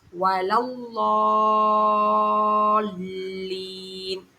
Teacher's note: வலவ், லா சொல்லும் போது நுனி நாக்கு மேல போய் டச் பண்ணணும். வாது சொல்லும் போது நம்முடைய நாக்கினுடைய ஓரம் வந்து மேற்கடவாய் பற்களோட வேர் பக்கம் போகணும். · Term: வாதோடைய மஹ்ரஜை